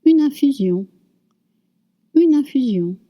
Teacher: since we have I and we have N, we're going to link it.